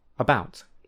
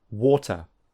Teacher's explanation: If you return to episode 8, you will see that these 2 vowels are in different places on the vowel trapezium for British English, so they are slightly different sounds. The schwa is very central because this is the most relaxed tongue position.